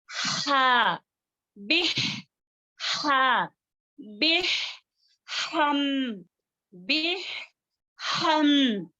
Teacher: ہاں وسط الحلق سے آیا ہے اس کو وسط الحلق سے اچھے سے ادا کریں